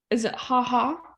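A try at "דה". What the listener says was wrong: Daha, because that's a dalet. Daha. Daha.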